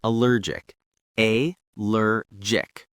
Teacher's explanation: Two syllables with stress on the second syllable. The G is soft like a J sound.